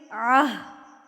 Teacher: جب آپ یہاں پر وقف کریں گے، جب آپ یہاں پر رکیں گے تو یہ جو گول تا ہے یہ ہائے ساکنہ یعنی کہ گول ہاں میں تبدیل ہو جائے گی